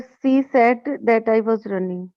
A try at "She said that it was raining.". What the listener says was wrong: Running नहीं, raining लिखा है. She said that it was raining.